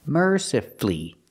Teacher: you have two syllables before f u l l y and the stress is on the first syllable so the U is silent you don't hear it